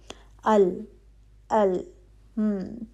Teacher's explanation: हरफ लाम की आवाज बारीक होती है।